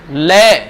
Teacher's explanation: तो जीभ तो ऊपर जाएगी और बगलों से, जीभ के साइडों से हवा निकलेगी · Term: पार्श्व